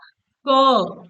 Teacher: क कहां से निकल रहा है आपका कंठ से निकल रहा है ना